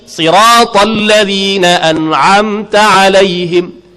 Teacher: Tak payah muncung, si tak payah. Si pasal dia beri kasrah.